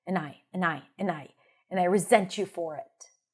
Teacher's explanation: every time you see an and, if it's not stressed, it's reduced to a schwa